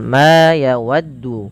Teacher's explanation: Pada lafal ma ini panjangkan huruf ma sepanjang 2 harakat karena ia memiliki huruf alif. Alif yang datang setelahnya.